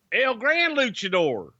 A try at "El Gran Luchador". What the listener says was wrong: No, you're like rolling R's and shit. Come on.